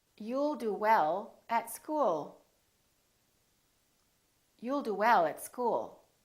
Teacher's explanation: you need to prolong the L, keep it right behind the upper teeth